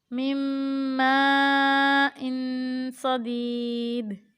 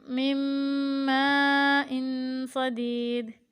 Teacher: من ماء صدید میں بھی نون ساکن کے بعد حرف یرملون میں سے میم آ رہا ہے تو اس کو ہم غنہ کے ساتھ ملا کر پڑھیں گے